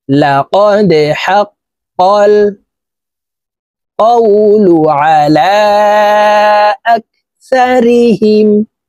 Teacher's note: এই দাল কলকলার হরফ নিচের দিকে ধাবিত করে ধাক্কা দিয়ে উচ্চারণ করব।